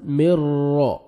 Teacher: نون ساکن کے بعد را آ رہا ہے تو یہاں میں آپ نے ادغام کرنا ہے بغیر غنہ کے ساتھ. مر را, را کو مرزبر ہے, را کو موٹا بھی کرنا ہے اور پر بھی کرنا ہے, را مشدد ہے.